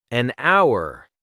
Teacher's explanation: because the H is silent so it sounds like our vowel sound.